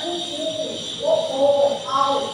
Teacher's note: உ ஊ ஓ ஓ ஔ ஆகிய ஐந்தும் வாய் திறக்கும் முயற்சியுடன் இதழ்களை குவிப்பதால் கிடைக்கிறது